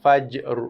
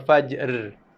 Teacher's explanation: Ra tu dibunyi ra mati, tapi ra yang dibunyi dengan sifat tebal. Ditebalkan bacaan ra tu pada lidah kita.